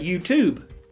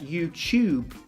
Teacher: We say it's a T sound. But in British English, we pronounce that YouTube as if it's like a CH.